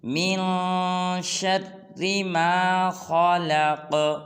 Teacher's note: لق میں آخر میں قاف کو قلقلہ کرنا ہے، یعنی کہ ہلانا ہے